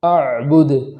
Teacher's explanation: وقف کی حالت میں دال پر جزم ہونے کی وجہ سے وہاں پر قلقلہ کریں گے